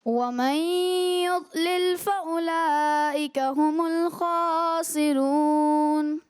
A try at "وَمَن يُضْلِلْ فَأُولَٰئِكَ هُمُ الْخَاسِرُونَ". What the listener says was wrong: مد متصل کو مزید تھوڑا دراز کریں اور را یہ پر ہوگا.